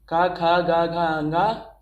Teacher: का वर्ग को देखते हैं तो इनकी आवाज़ निकलती है कंठ से